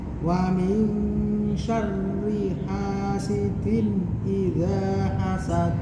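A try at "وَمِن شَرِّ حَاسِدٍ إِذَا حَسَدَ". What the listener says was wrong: Nah, penekanan di tasdidnya ro syarri wamin syarri hasidin idza hasad. Perlu di hati-hati juga.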